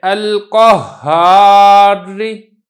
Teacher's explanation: را کی جو آواز ہے وہ بالکل تھوڑی سی کسرہ کی آواز ہے، زیر کی آواز ہے۔ حقیقت میں یہ وقف ہی ہوتا ہے لیکن تھوڑی سی ہلکی سی اس کے اندر آواز آتی ہے۔